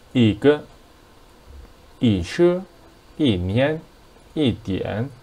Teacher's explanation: And if there is first tone, second tone, and third tone after E, that becomes the fourth tone. But if there is a fourth tone after E, it becomes the second tone.